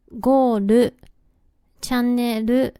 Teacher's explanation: ちなみに語尾のLはると発音されることが多いです